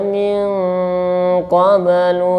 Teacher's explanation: Apa itu adna? Ya, atau gunahnya lebih tinggi daripada ikhfanya, sehingga nafas itu lebih cenderung ke hidung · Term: ikhfanya tingkatan adna